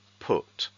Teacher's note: the medial vowel, the middle vowel, is not /u/, it is /oo/